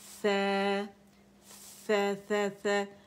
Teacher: زبان نیچے رہے گی, ٹھیک ہے, کیونکہ اس میں استفال ہے